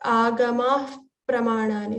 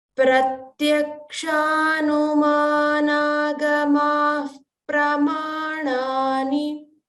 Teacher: whenever visarga comes before the pa or tha, we have to pronounce fa sound. So it's not fa, but it's like you're blowing through a tube.